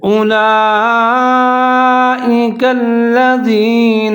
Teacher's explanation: زال کا خیال رکھنا ہے، زا نہیں پڑھنا